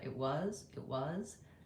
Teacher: Notice how I don't really say the T, it was, but rather it was, it was. It's a little bit of a stop T, or it's almost dropped in this case.